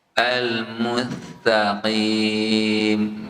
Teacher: Misalnya bacaan al-mustaqim itu dibacanya sinnya jadi tha. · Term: cedal